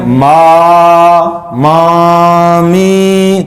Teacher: میم اور نون میں آواز ناک میں چلی جاتی، تو کیسے ما ما می، تو یہ ناک میں آواز جانا غلط ہے.